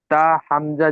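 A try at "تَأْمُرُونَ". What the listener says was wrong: তাহ নয়, এখানে হা নয়, হামজা রয়েছে। তা হামজা জবর তা। তা'মুরুনা।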